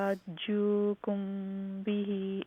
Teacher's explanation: میم ساکن کے بعد با ہیں اخفا شفوی